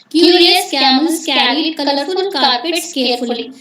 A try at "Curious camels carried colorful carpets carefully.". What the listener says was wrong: కాదమ్మా, మీరు స్ట్రెస్ వాడమని చెప్తున్నా కదా, కొంచెం స్ట్రెస్ చేయండి. క్యూరియస్ క్యామెల్స్ క్యారీడ్ కలర్ఫుల్ కార్పెట్స్ కేర్ఫుల్లీ, అట్లా కొంచెం చేయండి, స్ట్రెస్ వాడి చెప్పండి.